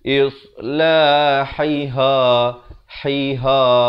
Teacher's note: Hai kemudian ha besar ataupun ha simpul makhraj di pangkal. Ha pedas ni di tengah kerongkong, ha simpul ini di bawah ataupun pangkal kerongkong ni.